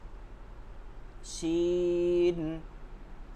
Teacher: তালেবস শব্দ আসে বা সহজ একটা একটা বাতাসে শব্দ আসে এভাবে তাফাস্সির হরফ এর মধ্যে বাতাস বহন হয়